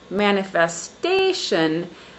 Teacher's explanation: the syllable stress is on the fourth syllable